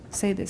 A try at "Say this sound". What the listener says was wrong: Say this sound. They're all stressed. And they need to be slow because they're all monosyllabic and we need to put pauses between. You're doing too fast. Listen. Listen carefully and watch, everybody. Say this sound while holding a finger lightly along the lips. Say this sound.